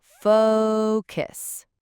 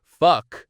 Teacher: The key here is to really make that O sound long and clear, almost like the O in the word go or no. It's that diphthong, that long O sound. Focus. Yeah, think of it as faux, like FOH, and then cuss.